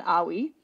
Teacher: So there's no R sound because, regardless of the R sound in different languages, they're often easy to confuse for other things like L or W. So the English R kind of becomes a W sound in Toki Pona.